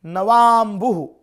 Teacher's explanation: तो ये अ प्लस अ मिलके आ बन रहा है। और आ जो वर्ण है वो दीर्घ है यानी दीर्घ संधि का वर्ण है।